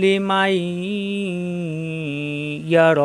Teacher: নুন সাকিনের পরে আসছে ইয়া, এই তাজদিদ ধরে গুণনা করে মিলিয়ে পড়তে হবে, তখন এই মা মিলবে এই ইয়ার সাথে, এই নুন সাকিন পড়া যাবে না, কারণ সাকিনের সাথে তাজদিদের পাওয়ার বেশি।